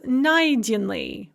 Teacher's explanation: So, for instance, найти, to find, она нашла, she found, becomes найденный, found, with the stress on the first syllable rather than the second syllable